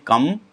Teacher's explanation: ये कम कंठ से बोला जाएगा